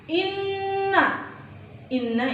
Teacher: hukum bacaan ghunnah musyaddadah karena ada Nun bertasydid cara bacanya ditekan